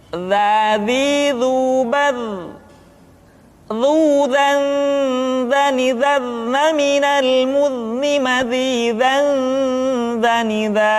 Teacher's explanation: Diucapkan dengan menyentuhkan ujung lidah dengan dinding dua gigi seri bagian atas seperti kita mengucapkan huruf tha. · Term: huruf dza